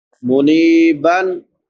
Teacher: نون کے بعد یا مدہ ہے، یا ساکن ما قبل کسرہ یعنی زیر ہے، ایک الف برابر لمبا کریں گے